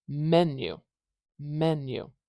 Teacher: the dress vowel it does not like being stretched longer so to give that first syllable a little more stress I have to make it a little bit louder in volume and I also have to make it a little bit higher in pitch in hertz so louder in decb and higher in hertz louder